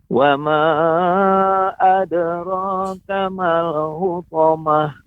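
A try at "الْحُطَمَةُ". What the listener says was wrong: Ya, pengucapan hu masih terasa agak lebih besar pengucapan hu. Yang benar hu. Lebih dilembutkan lagi Bapak pengucapan hutamah. Hu. Akan tetapi jangan sampai ada seperti menjadi huruf kha. Khu. Tidak. Akan tetapi hu.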